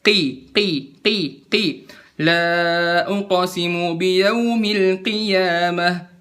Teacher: Kalau misalnya dia kasroh i, misalnya qiyamah, la uqsimu biyaumil qiyamah, nggak usah qoyamah, qoi, mentang-mentang dibaca ku, dia nggak dibaca koi, tapi dibacanya enteng, denger ya, qi, la uqsimu biyaumil qiyamah, bukan qoyamah.